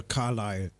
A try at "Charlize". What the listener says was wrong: No, it's Charlize. Said Z at the end, so it can't be Carlisle. Yeah, Charlize.